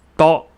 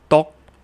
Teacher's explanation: we're ending in a K glottal stop. And like we just learned, we've got the vowel O, because we've got 2 consonants together without a vowel, so we're using O.